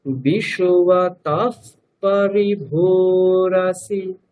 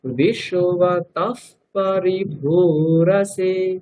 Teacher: বিসর্গের পরে পকার থাকলে বিসর্গটা কি হয়ে যায়, ওটা ফয়ের মতো হয়ে যায় অর্ধেক। হ্যাঁ এরকম ফয় হলন্ত উচ্চারণ করতে হয়, তাহলে বিশ্বতঃ তারপরে পরিভূরসি, তাই তো, হ্যাঁ এরকম উচ্চারণ করতে হবে। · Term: উপধমান্য